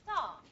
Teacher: You're not going to aspirate the T star because it's preceded by a S sound. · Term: aspiration